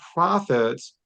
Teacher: the plosive P paired with that PH acting as an F